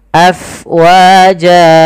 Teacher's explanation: Kemudian pada lafal fa, alirkan nafasnya karena fa itu harus ada angin yang kita keluarkan karena dia sifatnya hams, mengalirnya nafas.